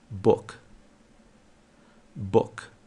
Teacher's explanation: O próximo som é o som de U, mas é um U curtinho, não é alongado.